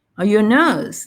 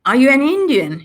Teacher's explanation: when you have polar questions, yes or no questions, it goes up.